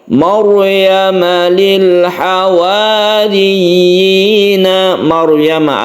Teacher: sukun ro yang sebelumnya ada fathah maka rnya ini dibaca tebal atau tafkhim